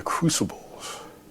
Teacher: When he says crucibles, he's got a very breathy quality to that. You'll notice that he whispers at times.